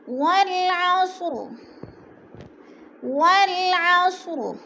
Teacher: والعصر، والعصر، عین کو حلق سے نکالنا ہے، صاد موٹے حروف میں سے ہے، پر کر کے پڑھا جائے گا